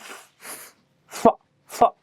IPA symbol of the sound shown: f